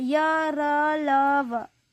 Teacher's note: इनका उच्चारण में वायु मुख में बहुत कम समय के लिए रुकती है। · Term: अंतश्य व्यंजन